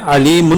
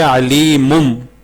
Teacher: ہم اس کو نون کو میم کے ساتھ بدل دیں گے کیونکہ نون ساکن کے بعد جو ہے وہ با ہے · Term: اقلاب